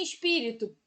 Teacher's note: em espírito pi é a sílaba tônica